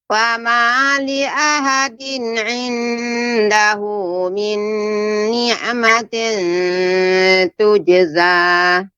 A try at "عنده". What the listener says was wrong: Tapi tadi saya ketika mendengar bacaan Ibu ketika membaca inda, ini juga, ini ikhfa Ibu. Inda, tidak boleh lengket lidahnya.